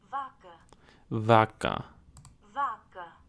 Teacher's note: it looks like the emphasis might be in the first syllable of the word